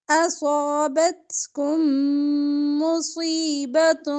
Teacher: میم ساکن کے بعد میم ادغام کریں گے غنے کے ساتھ